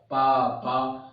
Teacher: आप बंद करके, जब जैसे बंद किए रहेंगे ओठ को, आप खोलेंगे तब पापा का उच्चारण होगा। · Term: ओष्ठ